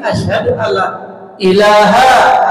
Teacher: nun mati ketemu lam, Allah, nunnya lebur, hilang, tidak ada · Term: idgham bila guna